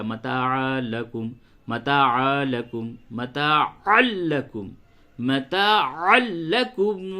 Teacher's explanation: لام پہ تشدید ہے تو اس کو جو آپ ملائیں گے تو تھوڑا سختی کے ساتھ ملائیں